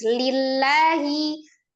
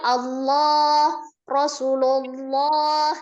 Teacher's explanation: Kalau dia kasrah dia tetap tipis. Lillahi. Kalau yang tebal Allah Rasulullah.